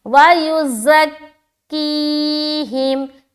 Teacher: زا میں بالکل سختی کے ساتھ سیڑھی والی آواز نکلے گی · کی میں پھر ہم یا مدہ کر رہے ہیں کیونکہ یا ساکن ہے